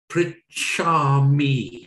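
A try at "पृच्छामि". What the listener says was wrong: Excellent. You've got it. Well done.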